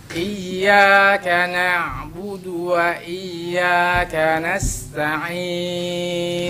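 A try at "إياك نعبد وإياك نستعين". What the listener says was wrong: Hati-hati ainnya agak lunakkan. Ta'in, pisahkan ta'in, jangan ta'in. Ta'in.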